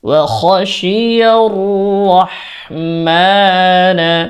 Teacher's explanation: রাহ বলা যাবে না রহ বলতে হবে রর উচ্চারণ মোটা